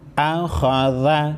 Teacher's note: حمزہ زبر ا، خا زبر خا، ذال زبر ذا، اخذ۔ خا کو موٹا پڑھیں گے، خا حروف مستعلیہ میں سے ہیں۔